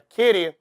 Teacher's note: Vejam só, querer, o R caiu, vira querer. Se você percebeu o querer, o re é a sílaba tônica, então a palavra oxítona.